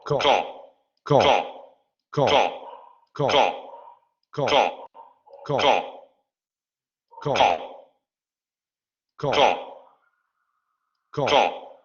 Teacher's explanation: En inglés se aspira al inicio de palabra. En francés no ocurre esto, es igual que en español. Con. Velar oclusivo sordo, articulación, el dorso de la lengua, perdón, la parte posterior de la lengua se sube hacia la zona del velo. · Velar oclusivo sordo, articulación, el dorso de la lengua, perdón, la parte posterior de la lengua se sube hacia la zona del velo. Ahí es donde se genera la oclusión. Tienen que golpear o tienen que contactar la lengua y el velo para generar el cierre del aire articulatorio y luego lo liberamos de manera explosiva.